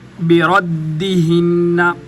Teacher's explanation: یہ یہاں پر جو دال ہے، دال مشدد ہے، اس کو دو دفعہ پڑھا جائے گا۔